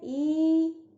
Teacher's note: और जब बड़ी हम बोलते हैं ई, तो वो दीर्घ स्वर है, उसमें 2 मात्रा का समय लगता है